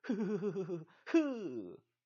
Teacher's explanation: 공기를 한꺼번에 입 밖으로 보내면 흐 하면서 목청에서 아예 마찰이 일어나서 올라와요. 공기가 한꺼번에 많이 올라오니까요. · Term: 목청 소리